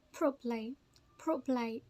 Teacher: most people don't pronounce the second syllable.